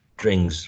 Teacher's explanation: we have a letter N here, which is transcribed with this velar nasal